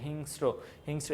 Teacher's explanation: র টা বেশি উচ্চারণ হচ্ছে স টা পাতলা ভাবে উচ্চারণ হচ্ছে